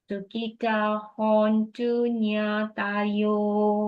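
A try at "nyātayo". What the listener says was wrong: Yes. Make the A short, Sukita hontu nyatayo. The tayo is short A, long A, short A, long O.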